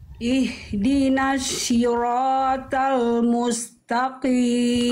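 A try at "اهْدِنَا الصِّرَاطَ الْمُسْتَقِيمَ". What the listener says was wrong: Bunda, nanti dilatih jangan sampai jadi huruf shin. Bukan ihdinasy tapi ihdinasli. Jadi huruf shod itu coba Bunda lafalkan sin biasa, SI biasa, coba si.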